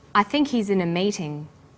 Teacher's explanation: the word think is stressed in this sentence and he's is unstressed when these words are linked the ha is dropped in spoken